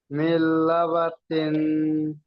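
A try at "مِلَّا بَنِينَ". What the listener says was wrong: মিল্লাবাতিন নয়, মিল্লাবানিন, মিল্লাবানিন।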